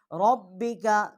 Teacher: اور لام جو ہے یہ مشدد ہے، اس کے نیچے زیر ہے، فصلی، صاد جو ہے ہم اس کو لام کے ساتھ تشدید کر کے پڑھیں گے، لام آگے لام ہے اس کے نیچے زیر ہے، را اس کے اوپر زبر ہے، اس کو ہم پر کر کے پڑھیں گے، موٹا کر کے پڑھیں گے